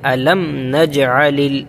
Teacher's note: اس کے بعد علم میں یہاں پر اظہار شفوی ہوگا، میم کو ظاہر کریں گے، علم نجعل، علم نجع، اس طرح سے نہیں پڑھیں گے، علم نجع، بغیر غنہ کے پڑھیں گے، علم نجعل۔